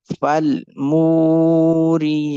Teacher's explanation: We connect fa with lam because of lam with sukoon and make meme longer because of waw madda and ya sound longer because of standing fatha.